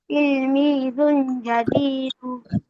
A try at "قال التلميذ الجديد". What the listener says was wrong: এ তানবিন নাই কোনোটাই। قالت তিলমিজুল, জালটা যে লামে ধরবে, ঠিক আছে, লামের সাথে সাকিন হবে। তাহলে قالت তিলমিজুল জাদিদু।